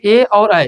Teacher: एक होता है कंठ तालव्य, इसमें कंठ और तालव्य दोनों का प्रयोग किया जाएगा।